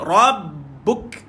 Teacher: Tahan dan lepaskan bu, matikan kaf, keluarkan angin tuan-tuan. Ada sifat hamas pada kaf macam biasa.